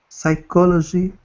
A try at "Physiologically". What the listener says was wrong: This is not psychology. Physiologically. Physiologically.